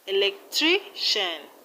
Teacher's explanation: In electrician, we have the stress on tri.